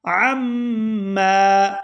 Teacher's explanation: یہاں عین کو میم مشدد کے ساتھ ملائیں گے تو غنہ کریں گے، اور میم کو جب دوسری دفعہ ادا کریں گے تو الف مدہ کی وجہ سے کھینچ کر ادا کیا جائے گا۔